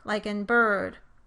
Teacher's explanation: when you say the stressed R vowel in bird by itself, your lips and jaw do not change position significantly